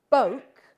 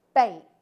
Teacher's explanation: plural bake Boke bake lots of nouns formed the plural by taking a vowel sound like this which is a back vowel Boke and turning it into a front vowel bake